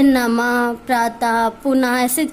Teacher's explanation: हम उसको पढ़ते टाइम लास्ट में जो ध्वनि निकलती है वो हा की निकलती है। जैसे नमः, प्रातः, पुनः, ऐसे जितने भी शब्द होते हैं जिनमें ये बिंदी लगी होती है, तो उसके लास्ट का शब्द का जो उच्चारण होता है वो हा से होता है और वो विसर्ग का चिन्ह माना कहा जाता है।